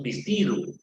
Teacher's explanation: uno de los rasgos que muestra el Castellano andino es la confusión que se da entre la vocal e con la i